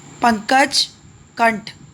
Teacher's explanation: अनुस्वार का जो उच्चारण स्थान है वो नाक है और अनुनासिक का जो उच्चारण स्थान है वो मुख और नाक दोनों है।